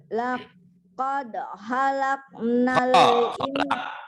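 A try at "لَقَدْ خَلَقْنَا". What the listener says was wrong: Kholak, khair. Jangan hair. Khair. Kho. Ini penyakit.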